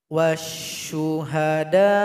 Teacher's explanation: Tapi kalau kita berwaqaf atau berhenti, panjangnya itu boleh dilebihkan menjadi 6. Sekarang kita panjangkan 6 karena kita mau berwaqaf pada mad wajib muttasil.